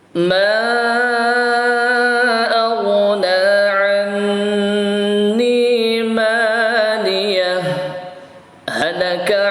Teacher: Pertama dengan saktah, berhenti sejenak.